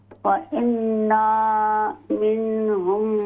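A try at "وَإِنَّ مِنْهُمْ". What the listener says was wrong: व इन्ना सिर्फ ज़बर है, व इन्ना मिनहुम, व इन्ना नून ज़बर न, लंबा न करें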